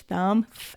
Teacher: that is an unvoiced sound because we aren't using our voice box we're just using our breath